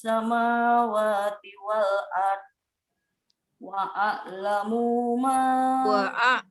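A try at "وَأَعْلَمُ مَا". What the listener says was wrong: wa a'lamu ma, munya pendek.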